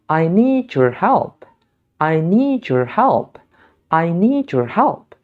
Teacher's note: Ketika bunyi de bertemu dengan bunyi ya, maka dia akan melebur menjadi bunyi je.